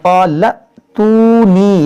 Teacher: یہ واو مدہ ہے, یا مدہ ہے, یہ دونوں کھینچیں گے, یہاں پر جھٹکا ہوگا.